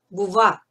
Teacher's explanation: it's pronounced somewhere between a V and a W.